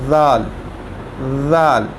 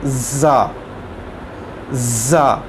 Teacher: ज़ाल के अंदर जो गोल है ज़ाल, इसके अंदर सीटी नहीं आएगी, सीटी की आवाज़।